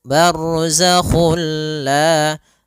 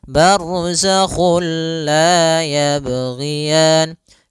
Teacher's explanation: kita memasukkannya secara utuh, secara seluruhan kepada huruf lam sehingga tidak menyisakan sedikit daripada bunyi huruf nunnya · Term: idgham kamil